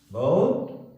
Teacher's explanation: அந்த ஹூ sound ரொம்ப குறைஞ்சிடும்